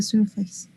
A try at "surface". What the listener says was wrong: Pronunciation, surface. It's not face, no surface.